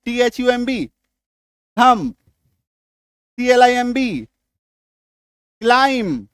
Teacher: Last में एम के बाद बी आ जाए तो बी का उच्चारण वहां पे नहीं होना है।